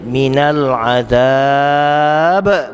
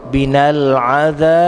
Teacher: bila kita berhenti kita matikan huruf yang terakhir minal adab meletup meletup tu kuat nama dia qalqalah kubra